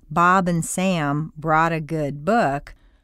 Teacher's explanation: The underlying hum is quite important, and it too has to do with your throat. You want to keep the vibration going from one word to the next, gluing the whole phrase together. · There are no blanks between the words, and there is a continuous hum.